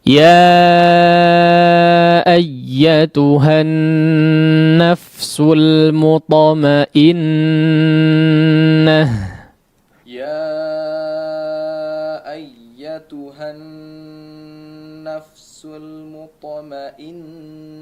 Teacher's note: huruf nun yang bertasydid digunnahkan dengan gunnah yang paling sampurna